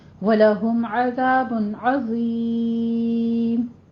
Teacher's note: عظیم میں بھی وا کو پر پڑھتے ہوئے یا مدہ ادا کریں گے، یا مدہ کے بعد ہم عارضی وقف کر رہے ہیں تو مد عارض وقفی کرنی ہے، یہاں پہ آپ نے 6 کاؤنٹ کرنے ہیں